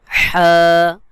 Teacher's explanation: ঠিক করে বল হলকের মধ্যখান থেকে